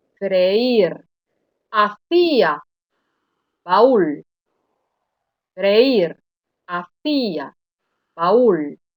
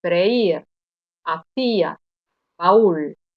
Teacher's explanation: se oye con mayor fuerza la vocal débil la vocal que en teoría no tenía ninguna intensidad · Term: hiato